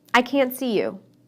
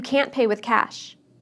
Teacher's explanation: I didn't use the T sound in any of those sentences